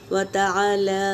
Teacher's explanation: व तबारकस्मुका व तआला यहाँ पे भी अलिफ मद्दा है, लाम के ऊपर खड़ा ज़बर है तो ये भी अलिफ मद्दे के मुताबिक खींचेंगे